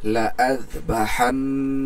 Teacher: যেহেতু নুনের উপর তাসদিদ, তাহলে এটাকে আমরা গুন্না করে পড়বো, ওয়াজিব গুন্না